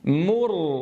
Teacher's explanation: تنبهوا الآن، أتت الميم مضمومة تلتها الراء ساكنة، ثم أتت العين مضمومة وتلتها الراء ساكنة. مر، فأضم الشفتين عند الميم المضمومة وأسكن تماما عند الراء.